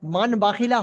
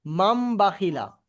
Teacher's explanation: নুন সাকিনের পরে যদি বা আসে, তাহলে নুন সাকিনটাকে মিমের দ্বারাই পরিবর্তন করে পড়তে হবে।